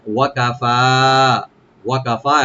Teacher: ওয়া ওপেন থাকবে, কাফ open থাকবে, ফা এখানে একালিফ টানবেন ওপেন করে